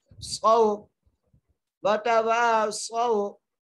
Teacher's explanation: کھینچ کے پڑھیں گے، وتواصوا، صاد کو واو سے ملائیں گے، صاد کو موٹا کریں گے، یہاں پہ لین کا قاعدہ لگ رہا ہے، بغیر کھینچے پڑھنا ہے ، صو، وتواصوا بالصبر، وتواصوا بالحق، با کو لام سے ملائیں